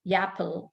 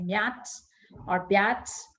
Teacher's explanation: speakers of Telugu who haven't been exposed to any other language, tending to mispronounce it, like instead of apple, they tend to say yapple, or instead of mat, M-A-T, mat, they say myat or byat, and so on.